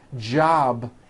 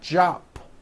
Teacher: job ends in a B which is a voiced sound